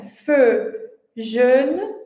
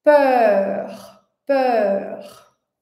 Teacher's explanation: peur, ele é um som um pouquinho mais aberto por causa do R final